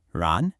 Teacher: The first character, ran, has a rising second tone. It starts low and it goes up almost like you're asking a question. Ran, you should feel that lift in your voice.